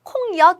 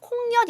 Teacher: 콩엿이라고 하지 않아요. 어떻게 발음하냐면 니은이 첨가가 됩니다. 그래서 콩엿 이렇게 발음해요.